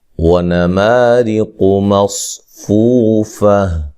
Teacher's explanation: ملانے کی صورت میں نون تنوین کا ادغام مع الغنہ ہوگا، وَنَمَارِقُ مَصْفُوفَةٌ، ما الف مدہ ہے، را کو باریک پڑھیں گے، قاف کو موٹا ادا کرنا ہے، صاد کو موٹا، فو و مدہ ہے۔